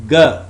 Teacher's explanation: It's voiced velar plosive sound.